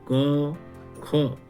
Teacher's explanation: इन दोनों वर्णों का उच्चारण स्थान जीभ का मूल भाग अर्थात जिह्वामूल है। इन दोनों वर्णों का उच्चारण अर्ध विसर्ग जैसा होता है और इनके आगे अर्ध विसर्ग लिखा जाता है। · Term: जिह्वामूल वर्ण